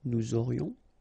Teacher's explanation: Nous aurions, final S not pronounced, and then you get this liaison